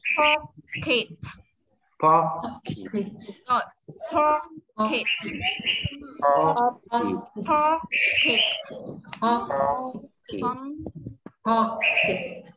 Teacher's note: Pocket ra hơi không phải cờ đâu ạ.